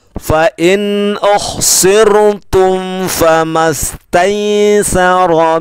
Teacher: Rumus yang kita ingat adalah yang dibaca dengung mim sukun bertemu ba dan mim sukun bertemu mim. Maka mim sukun bertemu fa tidak dibaca dengung atau bacanya tidak ada yang berubah.